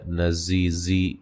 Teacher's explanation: زا کو زور سے، سختی سے اور سیٹی سے ادا کریں گے، اور یہ یا مدہ ہے۔